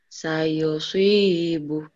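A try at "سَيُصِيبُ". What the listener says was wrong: Ibu suka ada hu-nya. Sayusibuh. Jangan. Ayo. Jangan ada hak.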